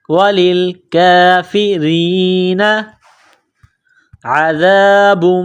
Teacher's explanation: وللکافرین، لام کو لام کے ساتھ ملانا ہے. کاف کے اوپر کڑا زبر ہے، 1 الف کے لمٹ میں کھینچنا ہے، را کو باریک کرنا ہے